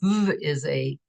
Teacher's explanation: is pronounced v, is a voiced fricative